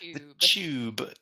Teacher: It starts with the TU, so it makes a ch sound.